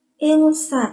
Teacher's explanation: Insa, di situ ada hukum bacaan ikhfa hakiki ya, karena nun mati bertemu dengan sin. Jadi cara bacanya itu samar-samar sambil berdengung.